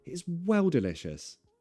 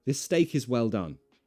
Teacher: Notice I'm putting more stress on well.